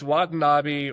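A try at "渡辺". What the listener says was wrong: yeah you're saying Watanabi but it's Watanab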